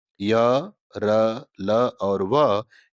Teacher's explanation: अन्य व्यंजनों की तुलना में इनके उच्चारण में श्वास का अवरोध कम होता है, इसलिए इन्हें अंतस्थ व्यंजन हम कहते हैं और इनकी संख्या हिंदी में 4 होती है।